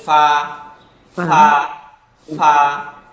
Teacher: উপরের দাঁত নিচের ঠোঁটে মাঝে গিয়া একদম প্লেসড হয়ে যাবে, উচ্চারিত হবে ফা, ফা, ফা।